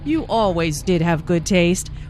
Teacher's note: notice the stress on did to emphasize the fact that julia does have good taste